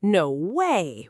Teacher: with a high rising tone, is often positive, almost like you can't believe something good just happened. No way, with a flat, level tone, can be a clear refusal.